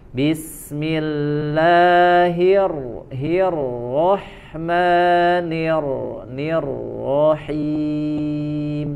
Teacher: Tapi kalau di Arab ya, di ro, di hijaiyah tetap dia nempel ke bagian langit-langitnya. Ya, karena unsurnya huruf ro dari ujung lidah ke langit-langit seperti huruf nun dan lam ya, kira-kira seperti itu. Tapi getarannya yang dikurangi.